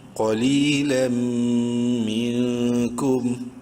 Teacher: نون ساکن کے بعد کاف حلقی میں سے نہیں ہے، اخفا ہوگا